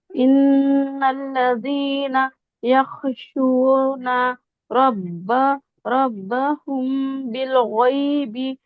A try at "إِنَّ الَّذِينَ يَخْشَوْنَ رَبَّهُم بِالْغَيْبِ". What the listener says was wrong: جی یخشون ٹھیک ہے جب فتحہ کے بعد واو کے اوپر وہ ہو تو او کی طرح ہوتا ہے یخشون کے بجائے یخشون ایک بار پڑھیں گے